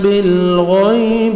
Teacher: غین کو موٹا کر کے پڑھنا ہے اور نرمی سے ادا کریں گے، یا لین ہے